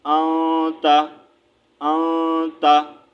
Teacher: حروف اخفا ہے، ٹھیک ہے، تا، تا حروف اخفا میں سے ہے تو ہم یہاں پر اخفا کریں گے، ٹھیک ہے، غنہ کریں گے، یعنی کہ ناک سے آواز نکالیں گے